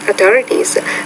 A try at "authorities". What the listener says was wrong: Be careful, the TH sound is killing your pronunciation. It's not authorities, but authorities. So I recommend you go to my pronunciation lesson number 24 and focus on the TH consonant sound.